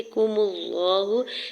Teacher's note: گے، کُمُ اللَّهُ، کاف کی پیش کو جلدی سے ادا کریں، میم کی پیش کو لام جلالہ کے ساتھ ملاتے ہوئے لام جلالہ کے اوپر کھڑی زبر 2 حرکت کھینچ کے ادا کریں گے ، ہا کے اوپر سنگل پیش جلدی سے ادا کرنا ہے،